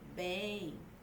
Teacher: O M não tem som de consoante, como na palavra mamão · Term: semivogal